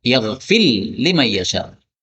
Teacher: ra ketemu dengan lam. Ini boleh dibaca idgham, maka ra-nya hilang menjadi lam.